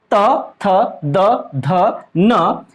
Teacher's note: इनका उच्चारण स्थल दांत से हो रहा है। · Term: दंतव्य